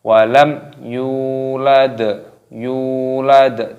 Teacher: Walam yu-nya dibaca panjang karena ada wawu sukunnya di sini. Walam yulad, yulad, tadinya berharokat sukun.